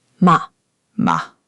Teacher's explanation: A quick, strong drop in pitch. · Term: fourth tone